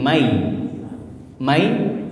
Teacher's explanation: nunnya hilang ya ditahan di hidung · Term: idgham bigunah